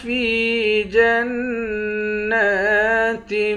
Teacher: فا کو یا کے ساتھ ملا کر یا کو ایک الف کے مقدار کھینچیں گے · نون پر کھڑا زبر ہے، کھڑے زبر کو ایک الف کے مقدار کھینچ کر پڑھتے ہیں